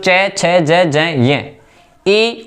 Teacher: इनका उच्चारण स्थान होता है तालू से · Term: तालव्य वर्ण